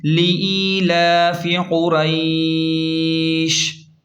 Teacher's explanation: وقف کا طریقہ کار یہ ہے، جب ہم یہاں پہلی آیت پر رکیں گے یعنی وقف کریں گے تو آخری حرف شین ساکن ہو جائے گا اور یہ مد لین عارض بن جائے گا، اسے نرمی سے کھینچیں